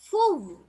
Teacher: செய்யும் வாய் வந்து குவியும் ஃபு உச்சரிச்சு பாருங்க ஃபு வாய் குவியுது ஃபு அந்த உதடுகள் ரெண்டும் குவியத்தான் செய்யுது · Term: வாவுல் மத்தியா